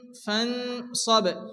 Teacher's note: নুন সেকেন্ডের পরে হরফে ইকফা পাঁচ অক্ষরের মধ্যে কি আসছে সাদ এখানে এক আলিফ পরিমাণ গুণনা করে পড়তে হবে